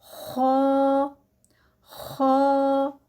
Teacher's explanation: जो पीछे जुबान की जड़ है वह उठेगी और मुंह सारा जो है वह हवा से भरेगा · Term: मोटा